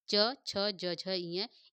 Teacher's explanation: च, छ, ज, झ, इ। इन पांचों का उच्चार स्थान क्या है दोस्तों? तालु है।